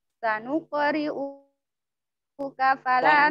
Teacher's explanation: Sanuk, kof sukun, kol surah. Sanuk ada dipantulkan sedikit, tapi ringan mawon